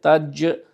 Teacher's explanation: জিম জিভের মাঝখানটা উপরে